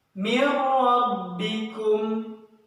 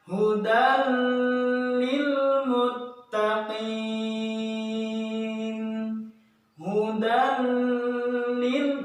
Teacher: gunnah pada kalimat idgham bila gunnah ini tidak diberlakukan karena la gunnah atau tidak didengungkan